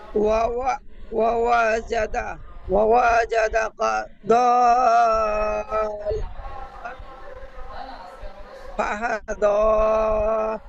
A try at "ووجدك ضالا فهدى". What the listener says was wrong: ও ও বলে এই ওয়াওটি টান হয়ে গিয়েছে, দ্বিতীয় ওয়াওটি টান হবে না। ও ওয়াজাদাকা দ, ধীর ভাবে, একদম ধীর ভাবে পড়বেন। ও ওয়াজাদাকা দাল্লান ফাহাদা।